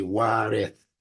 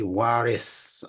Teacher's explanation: warith with the TH is also waris, where the TH is being exchanged by the S. So some parts of the world, they say waris.